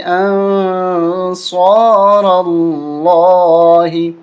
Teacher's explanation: یہاں پر ہم اخفا کریں گے، ناک میں آواز چھپا کے پڑھیں گے۔